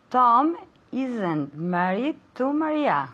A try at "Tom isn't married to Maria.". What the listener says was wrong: Okay, pero cuidado con la T. Isn't. Okay, that T is very important.